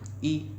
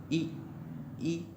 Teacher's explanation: थोड़ी सी हमारी जीभ का अगला हिस्सा मुड़ता है यानी कि सिकुड़ता है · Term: अग्रस्वर